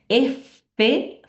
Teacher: El labio inferior con la cara palatina de las piezas superiores. Entonces sería labiodentales, así se llaman esas consonantes.